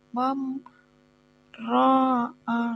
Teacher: ini ro-nya ini namanya dibaca ro tafhim. Bacanya itu tebal seperti itu.